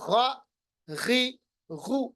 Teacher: غین اور خا ان کو ادا کرنے تھوڑی سی آواز موٹی ہو جاتی ہے، تھوڑی سی خراش پیدا ہوتی ہے. Pronounced from the top part of the throat, جیسا کہ یہاں لکھا ہوا ہے. · ادا کرتے وقت تھوڑی سی خراش، جیسے وہ نزلہ ہوتا ہے نا، تھوڑی سی خراش ہو جاتی ہے